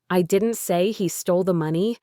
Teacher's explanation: the strong emphasis on didn't implies that someone else said it, not me.